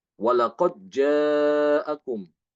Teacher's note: membaca dengan mengidghamkan Dal ke Jim walaqod jaakum ya qqolanya hilang kalau diidqamkan berarti qalqolahnya hilang ya · Maka di sini Imam Hisham membaca dengan mengidghamkan dal ke jim.